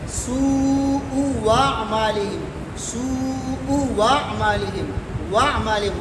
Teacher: تو پہلے پیش کی وجہ سے دوسرا حمزہ واو سے تبدیل ہوگا، لیکن یہ واو متحرک ہوگا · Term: ابدال بالواو متحرک